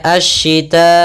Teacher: mad wajib muttasil, panjangnya 4 atau 5 harakat. Maka kita membacanya asyita'i, panjang dulu 4 harakat baru i.